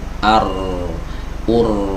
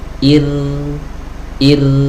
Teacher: tidak ada cekungan ya antara ujung dan pangkal lidah dan juga tidak ada penyempitan di tenggorokan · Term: ro yang tipis